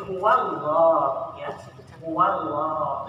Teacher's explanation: Jadi ketika sebelumnya berbaris fathah, Pengucapan Allah itu adalah tafhim, tebal ya.